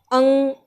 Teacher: अनुनासिक में क्या है, जहाँ नाक और मुख दोनों का प्रयोग हो, इसमें कोई स्वर नहीं आता, लेकिन हाँ इसमें अयोगवाह में से जो अंग है यानी कि अनुस्वार, ये आता है अंग, इसमें हमें नाक की और मुख की दोनों की आवश्यकता पड़ती है